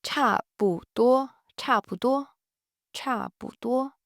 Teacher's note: Cha is fourth tone. 不 is a neutral tone.